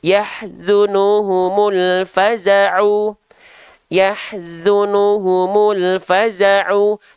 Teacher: Alif lam dibaca jelas dan sempurna karena bertemu huruf hidup yang tidak bertasydid. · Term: alif lam komariah